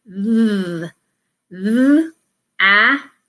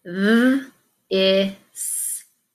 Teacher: So when it's voiced, it means we're saying th. Your tongue goes under your teeth and you're pushing the air out to say th. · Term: TH digraph that is voiced